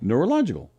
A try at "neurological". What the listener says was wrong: Neurological. Neura. Don't go neura. It isn't an accent There's no growls in neurological. Neuro. They'd be wrong.